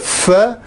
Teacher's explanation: i close my lips more or less so some air can still get out and you hear a lot of noise that noise is the sound of the fur in this case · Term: fricatives